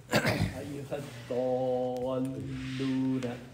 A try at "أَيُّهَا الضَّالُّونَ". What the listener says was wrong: Where's the حركة? 6 حركات.